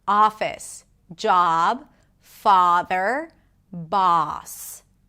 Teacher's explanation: Also, your mouth opens more and the lips round just a bit, not too much.